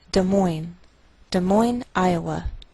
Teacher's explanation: we treat the name of this capital like one word and the greater stress is on the second part